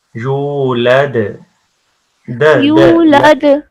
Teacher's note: دال کے اوپر کلکلا کریں گے